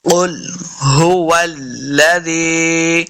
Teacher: ہا کو سینہ کی طرف سے ادا کریں گے، اس کا مخرج صحیح تبھی ادا ہوتا ہے جب ہم اس کو حلق کے نچلے والے حصے سے ادا کریں گے۔ هو الذی، واو کو جب بھی پڑھیں گے دونوں ہونٹ گول ہوں گے تب واو کا مخرج صحیح ادا ہوگا۔